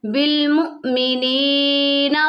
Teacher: ہے اس کو ہم نے جھٹکا دے کر پڑھنا ہے نی یا ساکن سے پہلے زیر آ گیا اس کو ہم نے ایک الف کی مقدار کے برابر کھینچ کے پڑھنا ہے